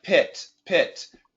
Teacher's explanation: The I sound, when we do the short I, like pit, pit, the I sound actually really comes down. It comes down fast.